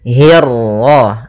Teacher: hi-nya tipis, kasrah bertemu ra yang tebal. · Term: ra tafkhim